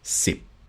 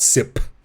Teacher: You do not have this aspiration happening at the end. So if I say the number 10, it's sip.